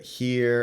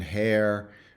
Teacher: there isn't a tense LAX contrast so you get here and hair but nothing in between the two